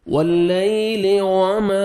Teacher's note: lips کو آپ نے راؤنڈ میں لے کے جانا ہے اچھی طرح تاکہ واو ادا ہو